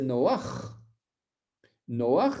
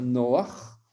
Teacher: Noach, ça veut dire qu'à la fin, il y a une lettre gutturale.